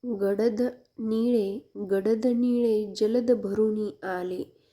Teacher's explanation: ड आणि ल ची पुनरावृत्ती झाली आणि एक नाद तयार झाला